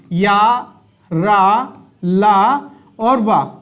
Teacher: अंतस्थ व्यंजन कैसे होते हैं? अंतस्थ व्यंजन सघोष होते हैं